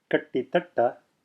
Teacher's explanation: you're switching your tongue rapidly back and forth between retroflex position and dental position.